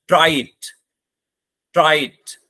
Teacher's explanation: तो ट्राई में आवाज डाउन हुई, इट में आते आते आवाज ऊपर हो गई, इसे कहते हैं फॉलिंग राइजिंग टोन.